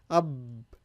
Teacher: If I close my lips and keep it closed, the enunciation or phonation of the sound of the letter ba is going to be stopped.